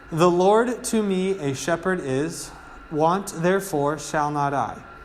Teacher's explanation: a pattern of eight syllables six syllables with an unstressed and then a stressed